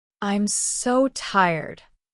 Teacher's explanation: Convey exhaustion with a falling intonation.